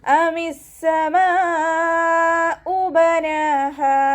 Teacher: മദ്ദക്ഷരത്തിന് ശേഷം അതേ വേർഡിൽ തന്നെ ഹംസയും വന്നു. മദ് വാജിബ് മുത്തസിൽ 4 5 കൗണ്ട് നിർബന്ധമായിട്ടും നീട്ടി കൊടുക്കുക